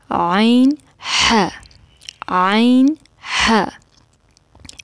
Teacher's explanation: وسطی حلق سے عین ح